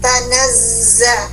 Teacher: Bunyikan aslinya huruf zai keluar bunyi desis tanpa napas, mengalir panjang.